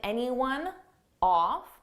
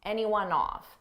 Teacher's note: I can combine anyone off off starts with a vowel and anyone it ends on a n sound so I can take that n and just add it in front of the vowel